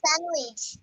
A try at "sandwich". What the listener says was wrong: হ্যাঁ, very good.